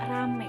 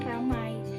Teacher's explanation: Nah, ini termasuk perubahan bunyi diftong menjadi fonem tunggal, yaitu perubahan diftong AI diucapkan menjadi E.